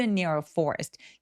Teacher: Near는 엄청 잘 들리기보다는 아주 가볍게 강세를 주시면 되겠습니다